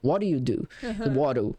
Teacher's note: Ele vira o nosso R para eles é o D. Isso é o som de D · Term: flap T